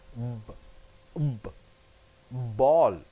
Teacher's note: B from your lips, but it is voiced.